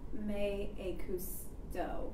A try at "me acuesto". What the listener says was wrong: Me acuesto, U-E. Me acuesto.